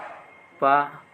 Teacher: पा ओष्ठ अल्प प्राण आघोष वर्ण है।